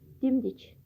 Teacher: dimdik deyiriksə sifət kimi olur. Yəni vurğu əvvələ düşür.